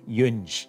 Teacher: the infix nasal assimilates to the palatal nasal